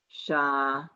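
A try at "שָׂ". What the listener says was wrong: Look where that dot is. Sa. Sa. Not sha. Sa.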